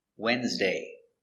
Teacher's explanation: It's a very common word, but it's not pronounced like it's spelled. The D is silent. And the E is silent too.